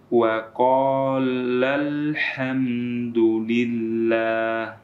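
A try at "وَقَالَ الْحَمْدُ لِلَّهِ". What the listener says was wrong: Baik, yang biasa seperti ini. Wa qalal ham, datar saja. Tapi yang harus kita lakukan adalah dengan menaikkan sedikit suara pada lafadz lal, seperti itu. Wa qalal hamdulillah.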